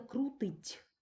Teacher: Ми чуємо звук ть який передає буква т